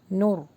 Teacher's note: رو کو ہیوی پڑھیں گے نون سے ملا کے